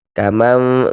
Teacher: Kemudian cara yang lainnya ketika ee mengucapkan iqlab itu yakni ada juga cara yang dengan cara bibir kita itu tidak menempel sempurna. Maksudnya itu tetap tetap ada celahnya sedikit